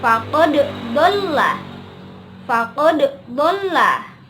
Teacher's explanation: Kalau faqad, ingat dal itu termasuk huruf kol-kolah. Berarti ketika huruf dal itu berharakat sukun, maka harus dipantulkan ketika kita membacanya.